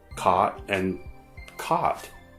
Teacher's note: In places where these vowel sounds have merged into ah, there's no distinction anymore between caught and caught.